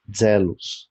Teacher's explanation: E o Z soa como DZ